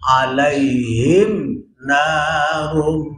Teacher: karena yang dihadapi bukan mim dan ba maka enggak boleh mingkem lama lama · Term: izhar syafawi, mim mati